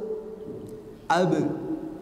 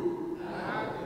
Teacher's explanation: Untuk bajudi atau ba jim dal ketika memantul maka suaranya itu dekat ke suara e. Ab. Ya, jadi ab bukan ab. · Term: qalqalah